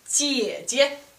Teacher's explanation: Third tone has two parts. Down, up. Down, up.